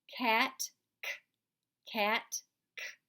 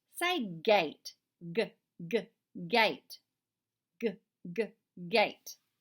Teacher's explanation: Your throat is doing the work the same in both of those, except your voice box is off in cat and it's on in gate.